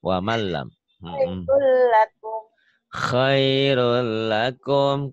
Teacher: Nun mati atau tanwin ketemu lam, ini namanya idgham bila gunnah. Dimasukkan, dileburkan. · Khairun lakum, bunyi N-nya hilang.